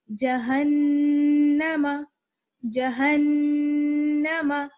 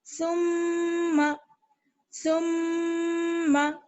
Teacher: جب نون اور میم پر تشدید آ جائے تو وہاں پر غنہ کرتے ہیں، یعنی ایک الف کی برابر ٹھہرتے ہیں اور آواز جو ہے ناک میں چلی جاتی ہے